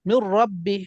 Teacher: নুন সাকিনের পর র আসছে, ইদগামের হরফ, কিন্তু গুণনা করা যাবে না